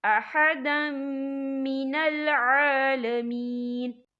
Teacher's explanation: تنوین کے بعد جو ہے میم آ رہا ہے، اور میم جو ہے حروف جر ملون میں سے ہے تو یہاں پر ادغام ہوگا، تو ہم اسے غنی کے ساتھ پڑھیں گے